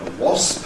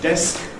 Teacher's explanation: final consonant clusters consist of an /s/ or an /f/, a voiceless fricative + a plosive